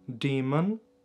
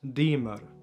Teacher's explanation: Aber Toskisch, die toskische Varianten, Varietäten, Dialekte haben ja einen Wandel durchlaufen, das hat sich dort geändert. Das N in vielen Positionen, in einigen Wörtern, hat sich zu einem R entwickelt.